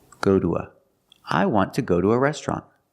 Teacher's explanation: we pronounce the two like do because again it's after a vowel and before the schwa sound